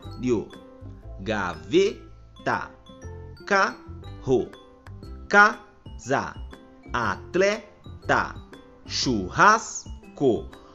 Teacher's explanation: a penúltima sílaba é a sílaba mais forte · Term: palavras paroxítonas